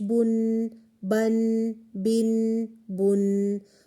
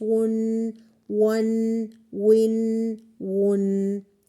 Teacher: میم، با، واو اور فا یہ ہیں شفوی لیٹرز، یعنی letters that are pronounced from lips